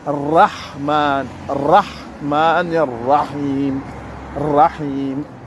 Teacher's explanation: Le ra, il est shamsiya. Et le ra, il doit être prononcé avec la langue et pas avec la gorge. Il ne faut pas dire un genre de W.